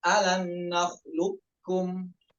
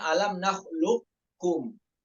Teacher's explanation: itu tadhhabul qaf sifatan wa makhrajan wa huwa muqaddam, itu dibaca idgham kamil.